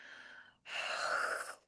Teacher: constrict the throat a little bit, but not all the way, you'll hear a stronger ha sound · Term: jikva mulya